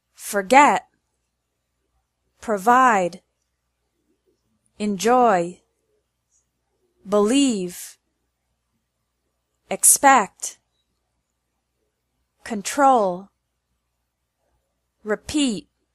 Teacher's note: two-syllable verbs tend to have the stress on the second syllable